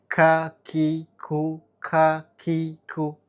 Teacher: kalau ka ketika tangan kita ditaruh di depan, ka itu ada hembusan udaranya. Kalau ko, ki, ku itu tidak ada hembusan udara yang menembak keluar.